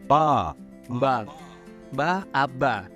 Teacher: bunyi plosive bilabial atau bilabial ya, pertemuan dua bibir